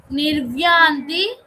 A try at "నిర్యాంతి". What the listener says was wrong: నిర్వ్యా కాదు, నిర్యా.